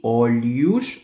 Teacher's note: Rosto, olhos, el H suena como LI, olhos, o al final es una U, y la S del final, SH